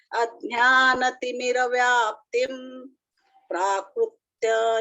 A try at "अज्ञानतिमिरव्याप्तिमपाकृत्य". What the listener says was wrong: अपाकृत्य नहीं, अज्ञानतिमिरव्याप्तिम अपाकृत्य है शब्द, तो म को इसको साथ लेके बोलिए।